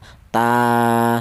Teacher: Di mana huruf ta ini berharakat berdiri. ini dibaca panjang yaitu satu alif atau dua harakat atau dua ketukan